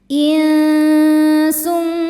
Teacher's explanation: Karena nun sukun bertemu dengan huruf sin. Cara bacanya nun disamarkan ke sin disertai dengung. Samar dan dengungannya sama besar. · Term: ikhfa haqiqi ausath, ikhfa hakiki awsat